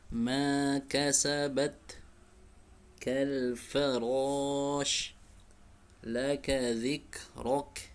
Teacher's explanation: kaf disertai dengan keluarnya nafas, suaranya punya sifat kuat suaranya, namun dia juga punya sifat yang mengalir nafas, hams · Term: huruf kaf